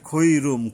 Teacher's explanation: মিমের উপরে এখানে গুন্না করতে হবে